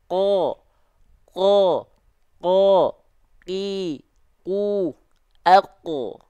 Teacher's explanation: huruf qaf itu dilafalkan dari lidah terdalam kita, pangkal lidah kita. Disentuhkan ke langit-langit yang warna pink ini.